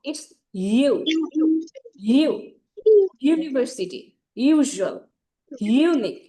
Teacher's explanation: ইউটা হচ্ছে voice sound, এখানে vibrate করে। আমি যখন ইউটা উচ্চারণ করবো, ইটস ইউ, ইউ, ইউনিভার্সিটি, ইউজুয়াল, ইউনিক, এখানে ভাইব্রেট করবে, ঠিক আছে?